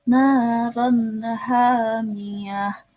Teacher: ro tanwin bertemu dengan h, yaitu huruf halki atau dibacanya itu hizar halki, jelas. Jadi ron tanwinnya itu dibaca jelas · tamar butoh di bagian belakang dibaca h tebal karena di akhir ayat